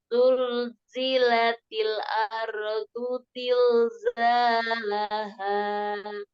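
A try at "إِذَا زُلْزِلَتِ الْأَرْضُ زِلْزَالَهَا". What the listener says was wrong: Disempurnakan ketukannya di huruf ti ya. Disempurnakan. Iza zulzilatil. Jangan dikurangi ya. Ketukannya berkurang ya. Coba disempurnakan. Idza zulzilatil ardu zilzalaha.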